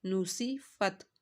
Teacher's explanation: نو، سین زیر سی، نوسی، فا تا زبر فت، نوسی فت، سین کی سیٹی نکالنی ہے